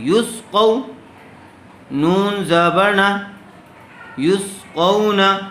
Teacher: قو قاف واو زبر قو، واو ساکن سے پہلے اگر زبر آ جائے تو وہاں لین کا قاعدہ ہوگا اور اس کو جلد و نرم آواز سے ادا کریں گے